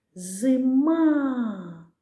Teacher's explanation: виділила голосом другий склад ма значить у слові зима другий склад наголошений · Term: наголошений склад